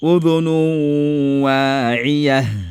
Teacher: Et le temps de la gonna, c'est 2 temps. C'est 2 temps seulement, il ne faut pas dépasser 2 temps.